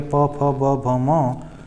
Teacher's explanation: दोनों ओठों के स्पर्श से बोले जाने वाले वर्ग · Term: ओष्ठ व्यंजन